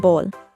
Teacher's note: is Alphabet letter B the sound of the letter B is an explosive sound made by puffing the air in the mouth then stopping it by the lips